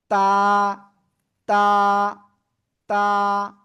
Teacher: দুই দাঁতের গোড়ায় লাগানো উপরে জিব্বার আগা · এক আলিফ টেনে পড়তে হবে